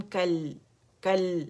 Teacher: کل کل لام کا توسط شو کرنا ہے، اگر آپ نے جلدی یہاں سے زبان ہٹا دی کل کل ہو جائے گا، جو کہ رانگ ہے